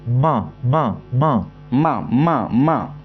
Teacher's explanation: मा में होट तो आएगा आएगा है ना नाक भी आएगी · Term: नासिका